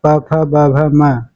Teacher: ओष्ठ में उ और प वर्ग अर्थात प फ ब भ म ये सभी आ जाएंगे। इसको ओष्ठ कहेंगे।